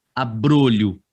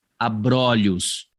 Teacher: Você vai pronunciar a palavra no singular com o fechado e essa mesma palavra, quando você a coloca no plural, o o fica aberto. Então, ali você tem a palavra abrolho, mas quando você põe no plural, abrolhos. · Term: plural de metafonia